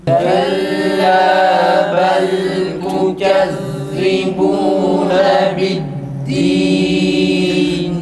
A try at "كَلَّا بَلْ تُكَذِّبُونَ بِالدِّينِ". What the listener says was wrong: Ötreler güzel çıkmıyor arkadaşlar. U çıksın tekrar. Tekrar esreler de iyi çıksın.